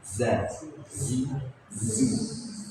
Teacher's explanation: makhrajnya ee di ujung lidah bertemu dengan gusi ee yang bagian bawah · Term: huruf zain